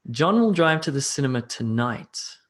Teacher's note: I emphasized tonight slightly, very, very slightly, but it's enough to shift the meaning of the sentence